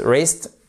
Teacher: Wrist, pensez à to write. On ne prononce pas le W.